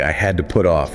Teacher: we can hear the schwah in the phrase I had to. That to gets reduced.